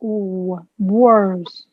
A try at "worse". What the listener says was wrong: See how beautiful that sounds?